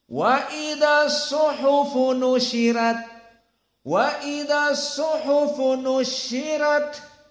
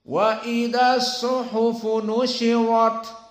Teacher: qiraah Wars dibaca flat qiraah jumhur dibaca atafkhim